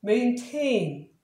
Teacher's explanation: 만약에 액센트가 있으면 이거는 액센트가 뒤에 있어요. 동사 유지하다라는 뜻이니까. 그럴 때는 다시 t 발음, 원래 발음 t.